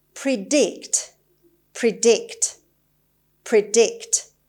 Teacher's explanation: the stress is on the second syllable on d predict it means tell beforehand tell in advance tell